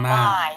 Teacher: So we're going into an I diphthong. You want to drop your jaw and then raise the tongue for an E sound.